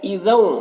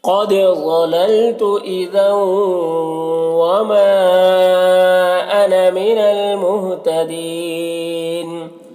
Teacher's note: تنوین کو واو سے ملا کر غنہ کے ساتھ پڑھیں گے، اس کو ادغام ناقص کہتے ہیں۔